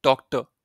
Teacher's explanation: you will not say the r part